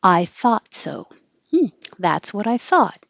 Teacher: this th in 22 is voiceless it's just air thought and the vowel is ah you have to open a lot